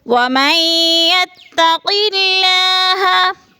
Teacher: قلہ کی اللہ باریک پڑھی جائے گی، اس لیے کہ اللہ سے پہلے لفظ قوف کے نیچے زیر ہے تو اللہ کو باریک کر کے پڑھیں گے۔